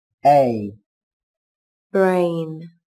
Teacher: Từ này đồng thời chứa nguyên âm đôi a. Các bạn đọc âm e nối với âm i. Âm e đọc dài hơn âm i một chút là được nhé.